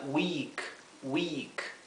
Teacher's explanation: traten de pronunciarlo como una I más larga, I, como si se alargara un poco más la I.